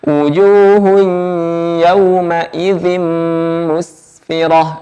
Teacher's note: Jangan dibaca wujuh seperti C atau ada udara yang keluar saat mengucapkan jim, karena jim ini tidak bersifat udara. Jadi jangan sampai ketika kita membaca jim ada udara yang keluar.